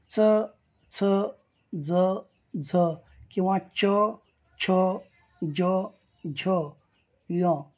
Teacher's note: च ज झ किंवा च छ ज झ या वर्णांचा उच्चार स्थान मृधा आहे